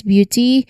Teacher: It's the B sound blending into the Y sound